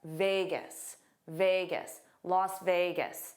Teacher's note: the stress is on ve, and then the end is gis because it's unstressed.